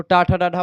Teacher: आप देखते हैं जीभ जाकर के मूर्धा से टच करती है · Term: मूर्धन्य व्यंजन